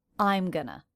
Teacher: notice how I'm is the most stressed syllable in that fragment